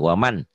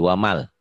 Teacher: nun mati atau tanwin bunyi N-nya berubah jadi idgham bila guna. Bunyi N-nya jadi hilang.